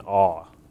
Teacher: the Nubians have more of a backed variant, so it's more like an aw for their aleph vowels